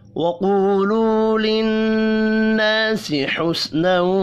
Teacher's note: قاف حروف مستعلیہ ہے، پر پڑھیں گے۔ نون مشدد پر غنہ کرنا ہے، الف مدہ کو 1 الف کے برابر کھینچ کر پڑھیں گے۔